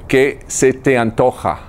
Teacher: do you hear that J sound it's kind of like a a strong H in the throat somewhat guttural